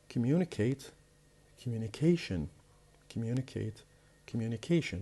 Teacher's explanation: The stress will be moved from the second syllable to the fourth syllable, the one before the last.